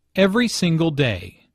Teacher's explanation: Notice that each word here is stressed. The speaker wants to make a point, so she emphasizes each word equally.